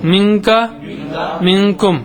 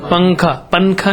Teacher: ایسے منکا ہے نا، پنکھے کے ایسا بولنا چاہیے، نون کا اخفا ہے